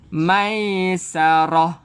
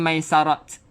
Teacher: Bila berhenti, tak marbutah, bacaannya menjadi ha. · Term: bunyi ha